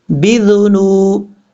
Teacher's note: موت پڑھیں گے، فَأَخَذَهُمُ اللَّهُ بِذُنُوبِهِمْ، با کے بعد ذال ہے، یہ ذال بغیر سیٹی کے ساتھ پڑھا جائے گا، اس کا مخرج ہے زبان کا سرا، اوپر والے دانتوں کے جو دو دانت ہیں اوپر والے، ان دو دانتوں کے اندرونی کنارے سے لگے تو یہ ذال پڑھا جاتا ہے ، بِذُنُو، سیٹی نہیں آنی چاہیے،